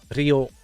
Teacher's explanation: So when I've talked to the people who are also having trouble with that sound, it's almost like you're rolling the R, but for a very short time